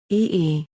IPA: ɔː